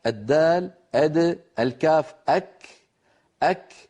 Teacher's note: هذان الحرفان متساويان من حيث الزمن لأنهما شديدان، وزمنهما أقصر من زمن الميم، وزمن الميم في ألم أقصر من زمن الشين والحاء في كلمة نشرح.